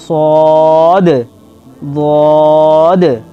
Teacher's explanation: 3 নম্বর, সদ এবং দদ এর উচ্চারণ কলকলাহ হবে, অর্থাৎ আওয়াজ মাখরাজে লেগে ফিরে আসবে, অর্থাৎ এর উচ্চারণের শেষটুকু মাখরাজে লেগে ফিরে আসবে।